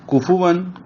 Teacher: واو دونوں ہونٹوں کی گلائی سے اس کا مخرج ہے، اور اس کے اوپر 2 زبریں تنوین آئی ہے.